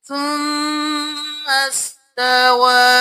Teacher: میم کو سین کے ساتھ ملائیں گے، الف کو چھوڑ دیں گے